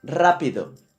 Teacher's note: Where is the accent? Yeah, it's in the first syllable, rápido, and it ends in an O.